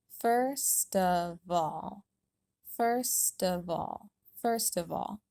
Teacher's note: remember to pull the final consonant sounds over to the vowels that start of and all so they should sound like sta and vol first of all